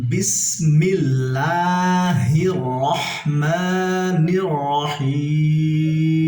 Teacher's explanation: যেহেতু এখানে রয়ের উপরে জবর আছে তাই আমরা রকে পুর করে পড়ব, রহ এখানেও পুর করে পড়ব, এই রয়ের ভিতরে পুর করে পড়ব।